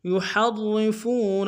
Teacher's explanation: يحرفون میں ہا کو گہرائی سے ادا کرتے ہیں